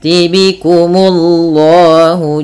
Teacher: munya tipis baru Allahnya tebal